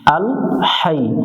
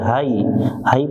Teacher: এখানে অনেকজনে ভুল করে এটা শক্ত করে হাই, হাই পড়া যাবে না, এটা লম্বা হা, গলার মধ্য থেকে একটু বাতাস বের করে উচ্চারণ করব।